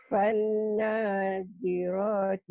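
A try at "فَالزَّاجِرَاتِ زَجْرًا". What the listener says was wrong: Bukan panna, fazza. Fazza ini zai bukan nun.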